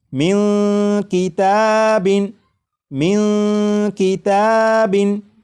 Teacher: آ چکا ہے، لہٰذا اس نون ساکن میں اخفا ہوگا، یعنی اس نون ساکن کی آواز کو ناک میں چھپا کر غنہ کر کے پڑھیں گے